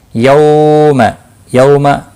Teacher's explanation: یوم واولین ہے، تھوڑا نرمی کے ساتھ کھینچ کر ادا کریں گے